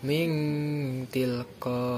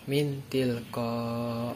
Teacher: nun sukun atau tanwin dibaca samar-samar antara izhar dan idgham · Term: ifa hakiki